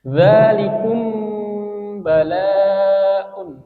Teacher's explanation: ketika mim sukun ini bertemu huruf ba atau yang disebut sebagai ikfa syafawi. Maka kita membacanya itu kita samarkan.